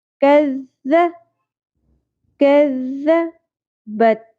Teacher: ذال کو نرمی سے ادا کرتے ہوئے ملانا ہے ذال کے ساتھ. سیٹی اور شدت نہیں ہوگی